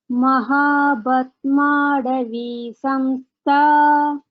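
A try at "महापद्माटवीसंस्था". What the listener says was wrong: Can you tell pa? Pa? It's not ba, it is pa, okay? Mahapadmatavi samstha. Now you try with ta. It's not da, it is ta, okay? Mahapadmatavi samstha. So this is ta.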